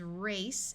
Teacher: Like right here we have the word race, because the E makes the C take its soft sound of S and changes the A to its long A sound. So the word is race and ends in the unvoiced sound of S